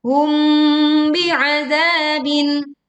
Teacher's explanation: ini kita dengungkan karena mim sukun bertemu dengan ba